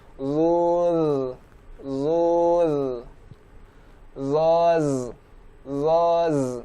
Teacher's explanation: huruf zo berharokat dhammah, berarti tebal, harokatnya juga tebal, sedangkan huruf zalnya tipis